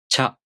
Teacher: you first make the [tɕ] consonant sound. Then, you consciously put the [j] sound, again a really short one, before the [a] vowel.